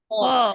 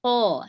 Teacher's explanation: جہاں شروع ہوتا ہے حلق, زبان کے بعد جہاں سے حلق شروع ہوتا ہے, جہاں زبان ختم ہوتی ہے حلق شروع ہوتا ہے, وہیں سے خو ادا ہوتا ہے